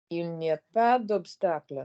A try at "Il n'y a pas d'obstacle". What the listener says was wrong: Slide more. Smaller mouth, smaller teeth. Slide into the next vowel.